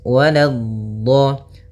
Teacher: Waladdo, la-nya jangan sampai tebal, jangan waladdo, tapi la-nya tipis.